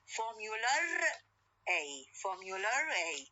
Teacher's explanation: When I pronounce these two words, I will pronounce the intrusive r in between the two words.